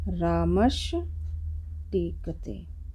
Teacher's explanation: जब विसर्ग के बाद टाठा या शा हो तो दंती सा जो है हमारा मूर्धन्य सा में बदल जाता है